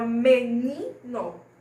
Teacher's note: Não tem acento, mas o ni é forte. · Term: sílaba tônica